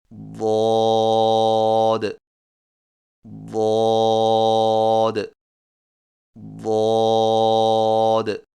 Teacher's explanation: زبان کے موٹے کنارے کو اوپر والی داڑھوں کی جڑ پر آہستہ آہستہ نرمی سے لگا کر خوب موٹی اور دراز آواز میں پڑھیں